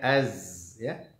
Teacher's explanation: huruf zai tidak boleh dipantulkan